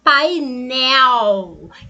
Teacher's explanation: o E é uma vogal e esse L tem som de quê? De U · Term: ditongo